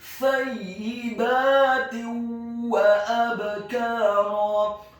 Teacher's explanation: Hukum bacaannya adalah idgham bi gunnah, memasukkan dengan dengung. Kemudian kata wa abkara, huruf wawunya ditasydidkan fathah 1 harokat. Huruf alifnya dibaca tipis tarqiq fathah 1 harokat.